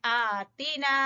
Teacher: फ़क़ालू रब्बना, रा को पुर पड़ेंगे, ठीक है, रब्बना और मद जायज मुनफसिल, मद जायज, रब्बना आतिना, आ को खड़ी जबर की वजह से आतीना, ता को छोटा पड़ेंगे